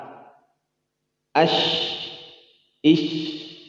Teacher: Shin. Tipis, bukan tebal. Berjalan suara, berjalan juga napas.